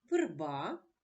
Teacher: у першому слові верба звук голосний е не наголошений тому він вимовляється чується наближено до звука и